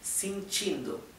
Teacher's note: la e se pronuncia casi como una I